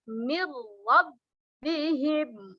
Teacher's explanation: Nun sukun bertemu dengan ra dinamakan idgham bila gunnah, masuk tanpa dengung. Min ra dibaca mirwab bihim wa ulaika.